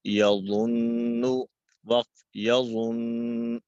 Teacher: مشدد حرف پر وقف کرتے ہوئے حرکت ختم ہو جائے گی، حرف ساکن ہو جائے گا لیکن تشدید باقی رہے گی۔